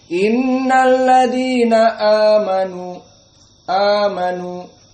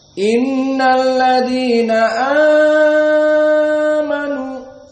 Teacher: Karena mad badal mereka membaca hanya 2. Adapun qiraah wars dengan al-isba.